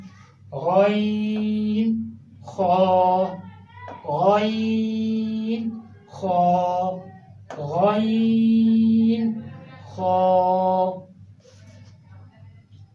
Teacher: गैन खा बिल्कुल हलक के ऊपर वाले हिस्से से अदा हो रहे हैं